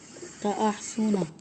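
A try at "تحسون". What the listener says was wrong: अलिफ हटाना पड़ेगा यहाँ पे, अलिफ एडिशन है। तहसूना, हाँ वाव भी हटा दो ना, वाव तो वाव मतलब होता है और, तो वाव हटा दो। तहसूना, तह पहले तुम अहसूना करो, फिर उसके बाद अलिफ हटा के ता लगा दो, तहसूना, ठीक है।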